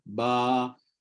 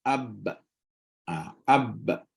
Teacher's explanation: berqalqalah keluar bunyi dengan terpisah kedua bibir bibir terpisah tapi rahang tak terpisah